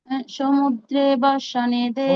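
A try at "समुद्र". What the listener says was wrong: সমুদ্র, সমুদ্রে না, সমুদ্র।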